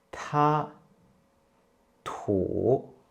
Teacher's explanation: We almost use the same mouth position for D when you pronounce T, but T is an aspirated version, so you can feel a puff of air coming out of your mouth when you pronounce T.